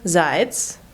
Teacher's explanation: Я in the unstressed syllable turns to the sound e too.